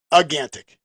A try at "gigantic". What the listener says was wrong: There's a G at the beginning of it. It's gigantic.